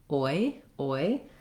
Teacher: The letters OI represent one sound, the gliding diphthong